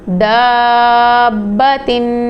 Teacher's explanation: با قلقلہ لیٹر بھی ہے، یہاں پہ خوب جماؤ کے ساتھ قلقلہ کریں گے اور مد کو بھی اسٹریچ کریں گے، حمزہ لام،